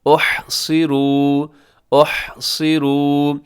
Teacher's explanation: ہا کا خیال رکھیے گا، صاد موٹا رکھیے گا۔ صاد کے نیچے جب زیر آتی ہے تو اکثر ہم اسے کیا کر دیتے ہیں، باریک کر دیتے ہیں۔